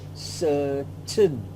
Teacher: Certain, the A and the I coming together of this word is also schwa